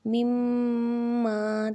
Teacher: مما تو لمبا کریں گے یعنی ناک میں آواز لے کے جائیں گے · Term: میم مشدد